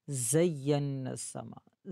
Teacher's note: زا میں سیٹی کی آواز واضح ہو، زبان کی نوک دانتوں کے ساتھ نہیں لگنی چاہیے